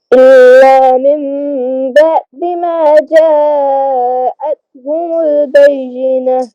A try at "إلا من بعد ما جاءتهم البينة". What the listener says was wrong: بعد میں عین کو کلیئر کریں إلا من بعد ما جاءتهم البينة